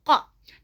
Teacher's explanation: pangkal lidah yang dekat dengan tenggorokan atas bertemu dengan langit-langit yang ada anak lidahnya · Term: huruf qaf